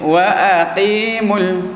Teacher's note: Okey, jadi wa aqimul. Huruf hamzah biasa kita tekan pada rengkung ni, bahagian pangkal rengkung ni.